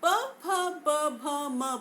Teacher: तो जब हम प, फ, ब, भ, म बोलते हैं तो इसके उच्चारण के समय हमारे जो दोनों होठ है वो आपस में मिलते हैं, टकराते हैं और मुख की वायु बाहर निकलती है,